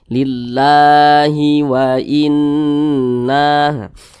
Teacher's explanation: di atasnya ada Alif kecil maka kalimat Allah dibaca panjang nah Mad Thobi'i panjangnya dua harakat atau kira-kira dua katukan